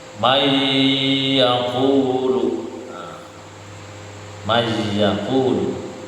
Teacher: Idgham itu memasukkan, bi dengan gunnah itu mendengung. Jadi memasukkan atau melebur bi gunnah dengan mendengung. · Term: idgham bil gunnah